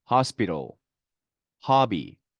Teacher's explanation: O는 자, 어떤 때는 아 발음이 납니다. 아일 때는 이렇게 강세가 오는 경우입니다.